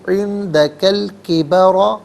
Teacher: یبلغن عندہ علیحدہ، کا علیحدہ ہم پڑھیں گے عندک، الکبر کا پر زبر ہے کاف پر، اور اسے الکبر کے لام ساکن کے ساتھ ملائیں گے، درمیان میں سے الف یعنی حمزہ کو حذف کیا جائے گا. کبرا میں را پر زبر، را کو پر کر کے پڑھیں گے عندک الکبر.